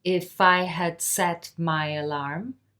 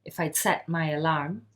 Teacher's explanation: If I'd set my alarm, I'd set. The had is being contracted there.